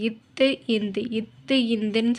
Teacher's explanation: மேல்வாய் பல்லில் வந்து அந்த நாக்கு வந்து படுது. அந்த நாக்கோட நுனியும் அந்த மேல்வாய் பல்லையும் அந்த நாக்கோட நுனியும் சேர்ந்து தான் வந்து இத்து இந்து அப்படிங்கிற 2 எழுத்து வந்து பிறக்குது.